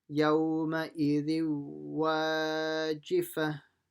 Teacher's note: you change the round ta into a ha sakin